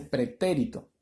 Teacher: la mayor fuerza de voz está en la antepenúltima sílaba